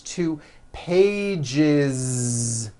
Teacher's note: One page becomes two pages with that voiced Z.